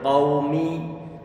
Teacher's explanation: ini kata qau ada huruf qaf dia itu difathahkan, tentunya dia tebal qaumi. Wawunya dia disukunkan.